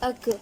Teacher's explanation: کاف، زبان کی جڑ سے ادا ہوتا ہے۔ کاف پر جزم ہے، جزم والے حرف کو پچھلے والے حرف سے ملا کر پڑھتے ہیں۔